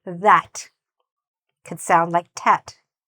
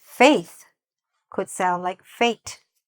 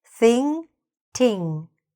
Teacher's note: sometimes the mistake is that the TH sounds like a T.